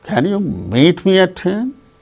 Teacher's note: So, the rising tone is on meet.